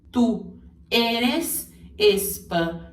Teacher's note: é com as vogais e e o mais fechadas e com ele bem pronunciado no final